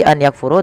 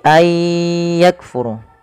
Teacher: Memasukkan bunyi nun kepada huruf setelahnya, kemudian disertai dengan gunnah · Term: idgham bi gunnah